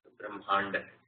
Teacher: it is the da, so it's a retroflex